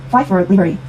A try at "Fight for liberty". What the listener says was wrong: 너무 T 발음은 미국식 발음 따라 강하라고 리얼 발음 하실 필요는 없어요. Fight for liberty.